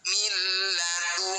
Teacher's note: Nun sukun bertemu lam disebut bacaan idgham bila gunnah. Cara bacanya bunyi nun sukun masukkan pada lam tanpa dengung juga.